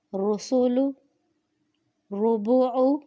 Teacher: را کے اوپر پیش آ جائے تو اس را کو بھی پر پڑھیں گے، جیسے رسول، ربع۔